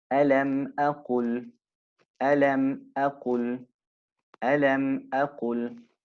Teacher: it is pronounced with idhar, that is clearly or with clarity, distinctly, without any ghunna · It's read clearly, the alif. And the meme is read clearly. So it doesn't merge into, nor is it hidden.